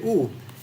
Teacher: the tongue is relaxed but the lips are in a small circle